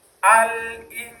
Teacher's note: Jadi bunyi nunnya agak samar, tidak jelas. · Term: ikhfa